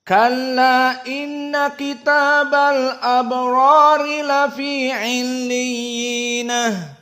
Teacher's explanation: Maka ini qiraah Ya'qub dalam keadaan dibaca 2 harokat. Namun ada ha as-saktah. Illiyin, dia di sini mad arid li sukun.